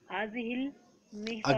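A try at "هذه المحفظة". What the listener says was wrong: Again you hil. You again said hil. Do not add hil. Hil mean alif lam.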